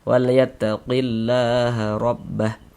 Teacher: Huruf ro memiliki tanda baca fathah. Ini tanda baca fathah. Maka huruf ro dibaca dibaca tafkhim. Dibaca tebal. Nah, sehingga pengkalisan kita naik terangkat ke atas ketika kita mengucapkannya.